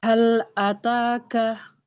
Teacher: Hal ataka, lamnya dilengketkan.